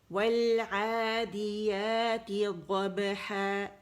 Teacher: ہا کے لیے آپ نے زبان کی جڑ کو نیچے دبانا ہے، پیچھے وائسلیس لیٹر ہے تو جو آواز بنی ہوئی ہے لیرنگس میں، ہوا اس کو لے کر آئے گی، رگڑ کھاتے ہوئے زبان سے یہ مخرج باہر نکلے گا، ٹھیک ہے؟